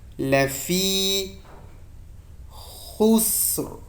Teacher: خا د سین سره جنګوم، د سین هغه نري شپېلکه ښکاره کوم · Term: د سین شپېلکه